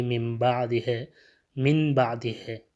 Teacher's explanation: اگر نون ساکنہ کے بعد حرف با آ جائے تو یہاں پہ اقلاب ہوگا، یعنی یہ نون میم میں بدل جائے گا